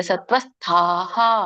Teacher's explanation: ವಿಸರ್ಗ ಆ ಸ್ವರದಿಂದ ಕೂಡಿರುವುದರಿಂದ ವಿಸರ್ಗ ಕೂಡ ಹ ಅಂತ ಬರುತ್ತೆ